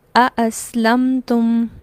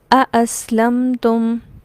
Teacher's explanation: دونوں حمزہ کو الگ الگ صاف اور مکمل طور پر اس کی ادائیگی کی جائے گی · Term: تحقیق